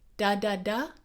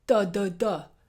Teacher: on the first one, my tongue is bouncing off the gum ridge. It's making a little explosion there. And on the second one, it's making an explosion off the back of the teeth.